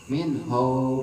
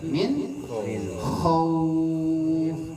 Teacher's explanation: Pastiin bunyi kho-nya keluar kho, bukan ho. Min ho, tapi min khauf.